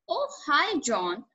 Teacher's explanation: Notice the rising intonation here. is excited to hear from John and is very pleased that he called her.